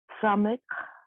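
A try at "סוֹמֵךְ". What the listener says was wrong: Somech. So this is a O. Somech.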